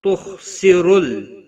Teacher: ولا الف مدہ ہے، ایک الف کے برابر کھینچ کر پڑھیں گے. تخسرل خا حروف مستعلیہ میں سے پر پڑا جائے گا